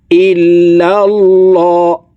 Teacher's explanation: আল্লাহ শব্দের আগের হরফে জবর আছে, এই কারণে এই লামকে ল অর্থাৎ মোটা করে পড়তে হবে। ইল্লাল্লাহ, হা পেশ হু, ইল্লাল্লাহু।